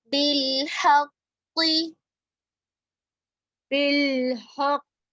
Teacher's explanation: بالحق حق میں قاف مشدد کے اندر دونوں قاف پر ہوں گے، موٹے ہوں گے